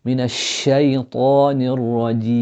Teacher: A'udhu billah, again opening or the upper jaw going up when you're saying the word of Allah, and then elongating the sheen when you're saying ash-shaytan